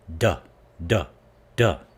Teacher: with duh the tongue goes behind the teeth